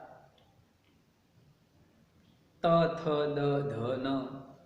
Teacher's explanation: उच्चारण स्थान दांत और नाम है इसका दंत्य व्यंजन